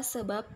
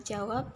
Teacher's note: Huruf B yang menempati posisi pada koda sebuah silabel sering diganti orang dengan huruf P karena lafalnya memang berbunyi P. Misalnya pada kata sebab dan pada kata jawab sering ditulis atau dieja menjadi sebab dan jawab.